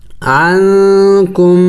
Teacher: اس میم کو نہیں پڑھنا جس پر سکون ہے، بلکہ اس سے پچھلے جو کاف ہے اس کو میم کے ساتھ ملائیں گے